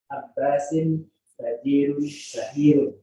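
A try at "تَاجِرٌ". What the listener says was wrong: Kenapa sin? Kenapa tiba-tiba sin? Abbasun tajirun syahirun. Abbasun tajirun syahirun.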